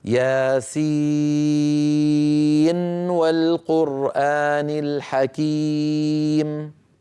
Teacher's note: لا يدغم حفص عن عاصم من طريق الشاطبية النون في الواو حالة الوصل · كذلك الأمر في نون والقلم وما يسطرون في سورة القلم، نون آخرها نون ساكنة، والقلم أولها واو، فأيضا نظهر هذه النون عند الوصل فنقول نون والقلم، لا ندغم برواية حفص عن عاصم من طريق الشاطبية. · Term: مظهرة النون, بالإظهار